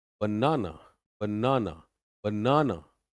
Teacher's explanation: बीच वाले पार्ट पे आवाज आपकी ऊपर जाएगी